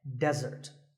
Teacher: Here, the stress is on the first syllable, which is de, desert.